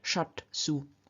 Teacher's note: in front of an unvoiced consonant, namely in front of su, the sh appears as the unvoiced consonant t, so we get shat su.